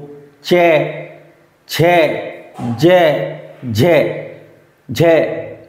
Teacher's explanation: च की बात करें तो च वर्ग पूरा तालू से बोला जाता है